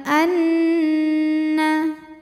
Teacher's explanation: karena Nun bertasdid cara bacanya dengung tahan dengungannya kurang lebih dua harakat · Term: ghunah musyaddadah